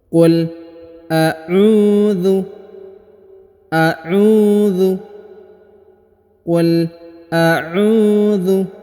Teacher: Perhatikan huruf u dipanjangkan 2 harokat karena di depannya terdapat waw sukun.